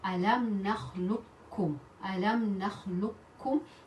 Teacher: the first qaf will be silent and the second kaf will be mustashaddida. We'll read it with shadda.